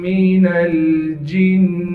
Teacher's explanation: نون کو آگے لام ساکن سے ملا دیں گے۔